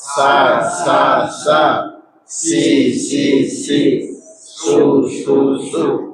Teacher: Kalau yang ini desis suaranya keluar dari ujung lidah, nafasnya keluar dari sisi-sisi rongga gigi.